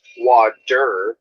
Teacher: an american speaker says wadder with a d